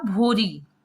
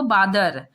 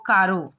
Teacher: ल के स्थान पर र का प्रयोग होता था।